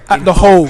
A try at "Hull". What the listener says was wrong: In Hull. You said at the Hole. That's a bit harsh.